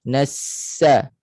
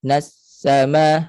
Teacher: Itu putus di tengah-tengah. Suara tidak boleh putus, mengalir sepanjang bunyi sin.